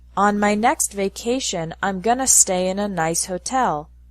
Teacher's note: in spoken English, going to is often pronounced gonna